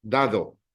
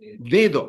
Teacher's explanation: How would this word ends in a vowel? We stress the second last syllable.